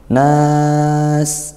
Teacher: Nas adalah mad arid lissukan. Bacalah dengan panjang satu, dua, atau tiga alif.